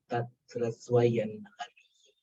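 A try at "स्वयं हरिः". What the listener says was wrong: Swayan, not nakara. Ha is there. Avargiya vyanjana. Anuswara should become wa. Swayam harihi.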